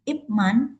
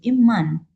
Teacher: peristiwa perubahan konsonan letup menjadi konsonan senggau